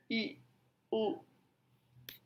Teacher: A close use a close mandibular position and high tongue position, I, U. Jadi pada posisi close, bibir tidak mulut tidak tertutup rapat sekali, namun melebar.